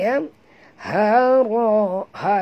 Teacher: ha simple bunyinya daripada dalam halqum